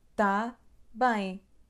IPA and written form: taˈbɐ̃j̃ ('tá bem)